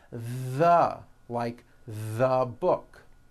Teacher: some of the most commonly used words in English and yes they should all be voiced and all made with your tongue coming through your teeth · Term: voiced th